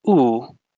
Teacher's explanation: while oo is more back your tongue goes to the back of your mouth